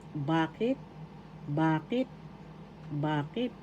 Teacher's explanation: The second syllable has the accent.